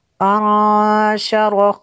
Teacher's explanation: نون ساکن ہے، اس کے بعد شین حروف اخفا میں سے ہے تو یہاں پہ اخفا ہوگا اس لیے غنہ کیا